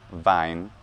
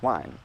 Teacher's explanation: early germanic languages as something like the long e sound and the long e sound regularly becomes i a diphthong sound in both modern german vine and english wine